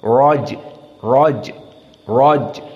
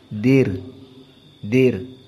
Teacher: ro dalam keadaan fathah maka dia mufakamah